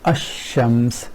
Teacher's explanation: Lam is not pronounced and you go right from Hamza to Sheen · Articulation point of lam and sheen are close together in oral cavity, in the front of the oral cavity.